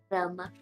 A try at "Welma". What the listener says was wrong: Her name's Welma. It's with a W.